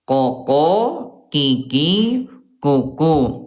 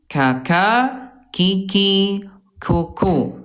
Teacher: Huruf qof dia jahr tidak ada udara dan kaf dia alhams ada udara.